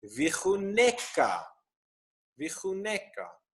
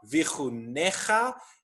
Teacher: the Jewish people mostly say vichuneka with the k and not the ch sound. So the little dot in there makes a little bit of trouble.